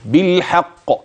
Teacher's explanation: واحرص على القلقله في القاف فهي في اعلى مراتبها لانها ساكنه فقط لا موقوف عليها في اخر الكلمه لا بل